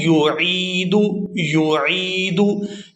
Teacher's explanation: یہاں پر یا ساکن ہے اور اس سے پہلا جو حرف عین ہے اس کے نیچے ہے زیر۔ اب عین کو اس یا مدہ کی وجہ سے 1 سیکنڈ یعنی 1 الف مقدار کے کھینچ کے ادا کریں گے